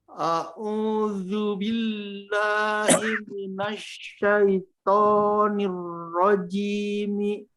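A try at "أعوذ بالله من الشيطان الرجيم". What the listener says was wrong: Sya-nya tidak perlu dibantu. Ya. Ditahan bibirnya. A'udzu billahi billahi minasyaitonir rajim. Bikasya. Ash. A'udzu billahi minasyaitonir rajim. Ketika u berarti ada wawu di sana ya, ada bunyi wawu. Berarti itu dibantu sama bibir. A'udzu.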